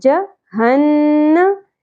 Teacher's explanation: نون مشدد کو پہ ہم غنہ کریں گے لیکن زبر کو زیادہ نہیں کھینچنا